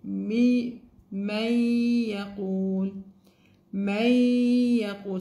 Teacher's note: So you would, instead of the sign, you will read it, you will do the nasal sound, which is مي, مي يقول, مي يقول. So we remove the noon and we'll put the nasal sound